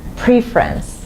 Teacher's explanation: But when you have preference, the stress is on the first syllable, preference, on P here.